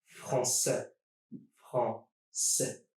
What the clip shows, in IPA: fran-sè